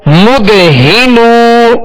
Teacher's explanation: ہا کو ابتدائی حلق سے ادا کریں گے